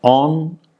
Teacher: a is nasalized because of a nasal following it. Now, that means that the nasalization of a vowel actually is dependent on a nasal consonant.